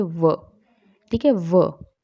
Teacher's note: जिन व्यंजनों के उच्चारण में नीचे के ओष्ठ दांतों को स्पर्श करते हैं, मतलब ऊपर के दांतों को स्पर्श करते हैं, तो दंतोष्ठ्य व्यंजन कहलाते हैं।